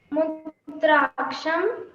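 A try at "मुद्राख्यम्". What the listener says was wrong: Mudrakhyam, it is Mudrakhyam, not Mudraksham, Mudrakhyam. Mudrakhya, kya, you say the kya.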